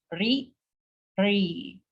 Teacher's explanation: This is the cerebral, we're using the retroflex, the top of the roof of the mouth.